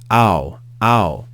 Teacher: even though we have two vowels we're going to read them as one syllable [Music] Alpha Upsilon with with no breathing you see the soft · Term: diphthong